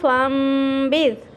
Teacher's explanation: نون ساکن کے بعد حرف با آ جائے تو وہاں پر ہم نے نون کو نہیں پڑھنا، اقلاب کرنا ہے. نون کو میم کے ساتھ ملا کر پڑھنا ہے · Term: اقلاب کا غنہ